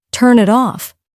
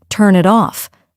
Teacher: might expect to hear each word clearly turn it off but in real speech it sounds like turn it off the words blend together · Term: linking sounds